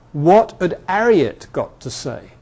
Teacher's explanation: So somebody with H dropping would say here, what had Harriet got to say? Leaving the H off Harriet.